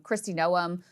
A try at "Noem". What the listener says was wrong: Noem. Like they do this weird hard pronunciation that is not how you say their name. It's gnome, like garden gnome.